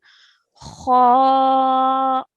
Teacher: we're going to pronounce this with a rounded mouth and a thick sound